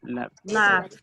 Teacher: Esas dos letras, o sea, no voy a hacer el sonido ni de la E ni de la D, sino que voy a hacer el sonido de T